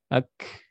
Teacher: Kemudian kaf, udaranya mengalir ketika dia sukun.